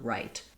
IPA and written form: raɪt (right)